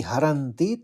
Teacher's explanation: हरती त के ऊपर आघात है